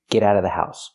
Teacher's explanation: you don't have to pronounce the vv sound in of because it's before a consonant. · We hear the T in get and the T in out pronounced as fast D's.